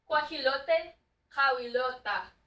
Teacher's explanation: So the A on the end, or the E on the end turned into an A. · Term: Final vowel change